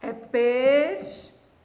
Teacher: Não há dois sons vocálicos juntos. Por quê? Porque o U não é pronunciado